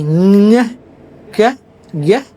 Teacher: Kemudian ada soft palate atau velum, itu di back of our tongue di bagian belakang like bunyi ngeh, ke, g, itu sebenarnya di back of the tongue dihasilkannya